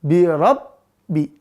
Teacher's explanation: birabbi setelah keluar dari kedua bibir maka lihat sifatnya satu biabbi enggak boleh ada udara yang berhembus karena dia jahar